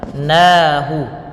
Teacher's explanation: Na tipis. Na di sini panjangnya 2 harakat yaitu mad tabi'i.